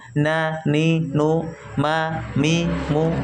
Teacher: Nun dan mim yang berharakat itu masuk dalam tingkatan yang kurang sekali gunahnya